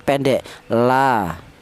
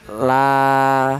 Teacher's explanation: Maka ini dibaca mad thobi'i. Adapun panjangnya mad thaobi'i yaitu dua harakat atau dua ketukan